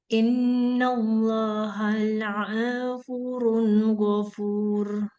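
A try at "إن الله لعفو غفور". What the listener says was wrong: La'afuwun. La'afuwun ghafur. Ya, ainnya hati-hati jangan sampai panjang. La'afuwun ghafur.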